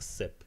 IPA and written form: sɪp (sip)